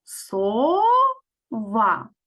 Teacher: гукаємо слово де голосніше ми проговорюємо у другому складі